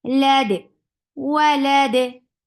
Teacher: you are giving qalqala on dal because we are giving temporary sukoon. If a temporary sukoon will bring qalqala.